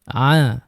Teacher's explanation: Bezakan huruf ain dan huruf hamzah. Ain tengah rongga kerongkong. Kita tekan sikit. A cuba. >> A >> kalau hamzah kita lepas saja.